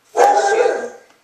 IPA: θeʃu